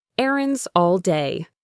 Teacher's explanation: the s at the end of errands can link to the next word all. It creates a Z sound in between.